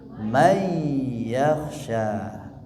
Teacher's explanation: Asalnya bunyi nun sukun itu man. Karena di depannya ada huruf idgham yaitu huruf ya, maka suara nun dilebur. Asalnya man yakhshaha jadi may yakhsha.